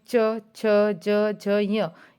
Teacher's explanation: च वर्ग में च, छ, ज, झ, य, ये तालव्य या तालु से हम बोले जाते हैं।